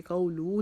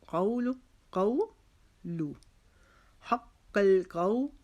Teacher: حق القول قو کو بھی ہم ایک الف کے جتنا لمبا کھینچیں گے. لو کے اوپر لام کے اوپر پیش ہے، لو کو لمبا نہیں کریں گے. قولو نہیں پڑھیں گے.